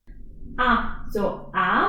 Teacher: my tongue is at the bottom of my mouth and the mouth is widely open